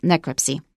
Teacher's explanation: So we stress the first syllable